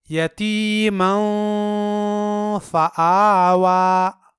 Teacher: یہاں یتیمن کی تنوین کا اخفا ہوگا